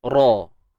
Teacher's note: Untuk ra kita kena tebal sebab dia baris atas.